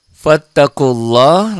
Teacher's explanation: lafaz Allahnya dibaca tebal tafkhim